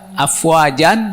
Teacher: Maka berhentinya n-nya buang panjang 2 harokat.